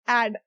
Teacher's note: It's open, and it is coming from the center part of your mouth.